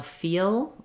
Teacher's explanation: So an American L, feel, you can lift the front of the tongue.